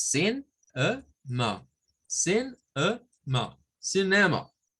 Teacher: Cuando lo decimos de corrido, pareciera que es una E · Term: schwa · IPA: /ə/